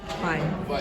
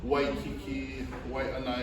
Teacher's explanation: Different islands, different districts, they use V sound, they use the W sound.